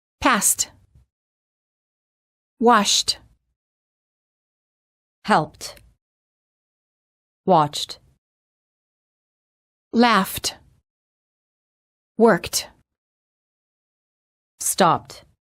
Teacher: a voiceless consonant, the E is silent and the D is pronounced as T.